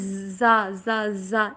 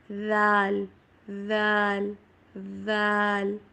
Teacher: ذال کو اکثر اسٹوڈنٹس لذینہ میں زا زا زا یہ والی ساؤنڈ کے ساتھ پڑھتے ہیں، حالانکہ یہ پڑھا جاتا ہے ذال ذال ذال